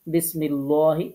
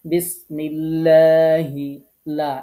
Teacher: বারিক মানে লা পড়া, ঠোঁটটা গোল না করে স্বাভাবিক রেখে পড়া